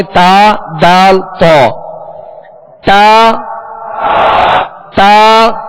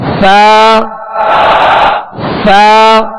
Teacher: تا، دال، تو میں زبان کی نوک تھی، اور سا میں زبان کا سرا اوپر کے دانتوں کے اندرونی کنارے، زبان کا سرا اور اوپر